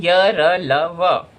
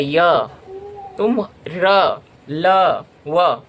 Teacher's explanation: इन व्यंजनों में जिह्वा मुख के किसी भाग को पूरी तरीके से नहीं छूता है तथा वायु भी बहुत कम समय के लिए रुकती है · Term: अंतस्थ व्यंजन